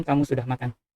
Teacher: Kalau sekadar menginformasikan kamu sudah makan, biasanya nadanya sedikit menurun di bagian akhir